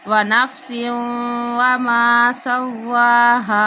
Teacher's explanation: تنوین کے بعد واو آ رہی ہے تو یہاں پہ ادغام ہو رہا ہے غنے کے ساتھ